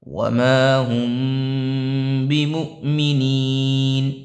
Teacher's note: یہ مؤ کے اندر جو ہے حمزہ ساکنہ کا قاعدہ ہو رہا ہے، جو پیچھے بتایا تھا میں نے، حمزہ ساکنہ کے پڑھنے میں جھٹکا ہوتا ہے